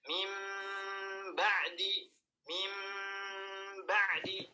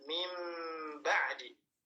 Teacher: kita merubah nun menjadi mim, kemudian digunnahkan mim, masukkan ke hidung, ditahan ya 2 harakat, mim ba'di, mim ba'di, kemudian 2 bibirnya dirapatkan mim ba'di. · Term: iqlab